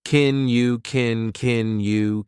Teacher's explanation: I said, can you just ballpark the cost for me? Can in this sentence is an auxiliary verb, so we pronounce it unstressed, and it sounds like kin.